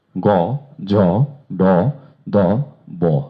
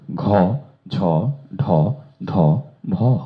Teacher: এই লাইনে বাতাস কম লাগে এবং বাতাস বেশি লাগে তার পরের ঘ, ঝ, ঢ, ধ, ভ। এটি মহাপ্রাণ। · অর্থাৎ 1 এবং 3 এই দুটি লাইন হচ্ছে অল্প প্রাণ, এবং 2 এবং 4 এই দুটি লাইন হচ্ছে মহাপ্রাণ। শুধু উচ্চারণ স্থান ঠিক থাকছে দুইটা লাইনে, শুধু অল্প প্রাণ মহাপ্রাণ জনিত পার্থক্যটা হয়ে যাচ্ছে।